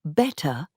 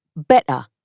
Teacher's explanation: The t in the middle and at the end of words disappears